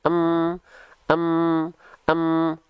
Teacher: sukun diam rahangnya nah gitu ya oke Nah maka di sini huruf mimnya kita lafalkan m saja karena dia tidak berharakat Tak Bergerak enggak ada bunyi vokal a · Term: mim sukun